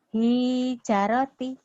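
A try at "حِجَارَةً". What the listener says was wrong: Yang panjang hi-nya apa ja-nya? Rotinya di atas ya. Yang ini bukan roti lagi, tapi apa? Hijarota.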